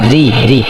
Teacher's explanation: রয় নিচে জের হলে রটা পাতলা করে পড়তে হবে